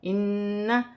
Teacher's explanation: یہاں پر بھی نون مشدد ہے، غنہ بھی کیا جائے گا